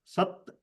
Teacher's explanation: the T without the under dot is pronounced T Dental T